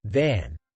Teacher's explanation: you will feel a vibration for the V sound